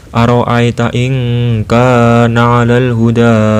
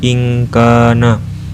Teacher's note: kedengarannya seperti suara eng jika bertemu dengan huruf qaf dan kaf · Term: ikhfa